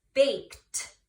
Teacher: I hear the T sound. So that ED is actually making a T sound at the end.